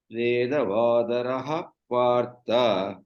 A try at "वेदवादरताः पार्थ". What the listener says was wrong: Why are you saying raha? It is rataः partha. Not rathaha.